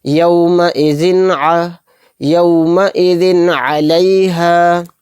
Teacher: اظہار کا قاعدہ، یعنی زال دو زیر زن، زن میں جو نون کی وائس آ رہی ہے، این کی وائس آ رہی ہے، اس کو کلیئر کر کے ظاہر کر کے بلا غنہ کے جلد پڑھیں گے